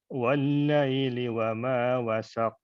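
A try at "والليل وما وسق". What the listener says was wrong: Wah, jangan ada telat, langsung dia. Wasaqo. Kalau dia telat, itu ada tasdid tandanya seperti abilahabin watab. Nah, ini harus wama wasaqo seperti itu.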